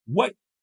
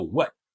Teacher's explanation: As if you want to say what, but you do not aspirate the air at the end.